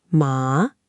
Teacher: the second tone rises, like when you're asking, huh? Or what?